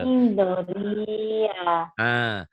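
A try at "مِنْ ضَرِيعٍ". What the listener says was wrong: Jangan Doria tapi ini jadi sukun, ini jadi mati, jadi huruf mati. Doria kayak ngeden. bukan Mindoria, Mindoria ya.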